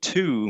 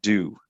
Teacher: everything is the exact same in placement it's just that we turn our voice on or our voice box vocal folds and whatever you want to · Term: turn their voice on